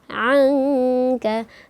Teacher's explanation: ketika kita membacanya harus kita dengungkan dan disamar-samarkan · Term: ikhfa haqiqi